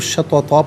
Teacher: اذا شططن، یہاں وقف پڑھیں گے تو شططا پڑھیں گے کہ 2 زبر کی تنوین وقف میں الف سے چینج ہو جاتی ہے